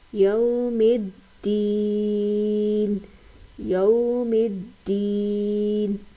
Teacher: الف اور لام دونوں کے اوپر کوئی حرکت نہیں ہے، دونوں کو نہیں پڑھا جائے گا. دال کو جمع اور سختی سے بھی پڑھیں گے کیونکہ یہ مشدد حرف ہے